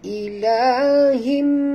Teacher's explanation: Tukarkan bunyi tanwin kepada bunyi mim, ya. Jadi bunyinya ilahim. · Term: iqlab